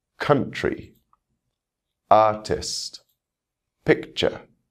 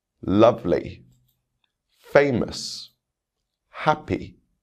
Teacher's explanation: You can hear the stress on the first syllable of these words.